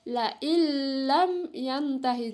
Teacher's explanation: Jadi nun sukunnya dimasukkan ke dalam huruf lam.